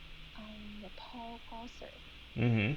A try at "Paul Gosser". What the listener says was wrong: So that was good, but when you're making the S sound, you want to make it like a maybe a stronger S sound. So it's Gosser. Paul Gosser.